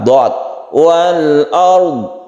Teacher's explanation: Dotnya tidak perlu qalqalah.